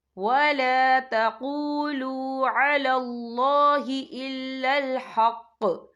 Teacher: فعل مطلق کی علامت ہے، تو یہاں پہ ٹھہرنا بہتر ہے۔ وقف کی صورت میں قوف ساکن ہو جائے گا، تو ہم یہاں قلقلہ کریں گے۔